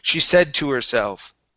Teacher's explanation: practicing going from an sh into an s and then dropping the h on her